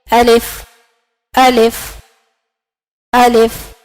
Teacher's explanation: الف جوف دہن سے ادا ہوتا ہے. تو جوف دہن سے مراد منہ کا خالی حصہ.